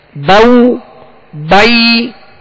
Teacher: اور جب یا لین ادا کریں گے تو زبر کو یا کی طرف یعنی با یا زبر بائی یا کی طرف لوٹے گی اور آواز گرے گی آخر میں آ کے. بائی یعنی زبر ادا ہو کر جب یا ادا کریں گے تو آواز کو گرا دیں گے